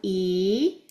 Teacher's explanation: E, which is a high and tight and back sound